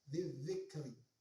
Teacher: alif lam tersebut ketika dibaca tidak kedengaran alias melebur ke huruf selanjutnya. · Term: alif lam syamsiyah